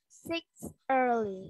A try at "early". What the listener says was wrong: Oh, I think they meant early, not six early. Early.